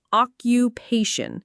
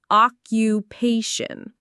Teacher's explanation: It has four syllables and the main stress is on the third one. Occupation.